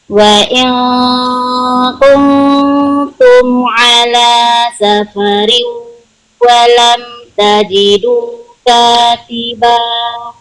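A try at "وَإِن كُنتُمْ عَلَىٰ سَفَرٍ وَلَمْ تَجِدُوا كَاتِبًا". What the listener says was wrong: Ayo, idgham bi gunahnya tahannya lebih lama. Wa in kuntum ala safarin sedikit masukkan ke hidung.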